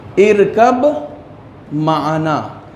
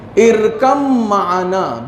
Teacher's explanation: اس میں ادغام یہ ہوگا کہ یہ بے جو ہے وہ کیا ہوگا؟ نہیں پڑھا جائے گا اور میم کے اوپر تشدید دیا جائے گا